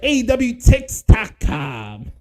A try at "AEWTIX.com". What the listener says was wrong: The only thing I would say to that, is remember it's AEWTIX.com. They don't say Tix. AEWTIX.com.